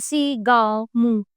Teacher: इसका उच्चारण करते समय हवा नाक और मुख दोनों से निकलती है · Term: अनुनासिक